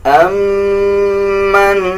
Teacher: میم کے اوپر شد ہے، غنہ کیا جائے گا